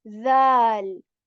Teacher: Tip of the tongue touches the tip of our upper teeth very softly.